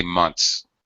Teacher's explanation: For example, in a word like months, you have the N sound, then the TH, and then the S. All right, it's an acceptable pronunciation to reduce that TH, which is difficult in combination with the other sounds. Perfectly acceptable to say months.